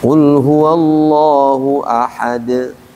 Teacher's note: Tapi qalqalah kubra saat berhenti